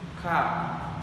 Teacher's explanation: according to the place of articulation is lingual velar and according to the manner of articulation is stop. According to the voice of articulation is voice.